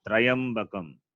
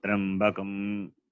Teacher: There is no vowel after Repa.